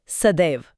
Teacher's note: जैसे सदा plus ऐव में हुआ। जी आ और ए मिले और परिणाम हुआ एक ज्यादा शक्तिशाली दो मात्रा वाला स्वर ऐ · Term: वृद्धि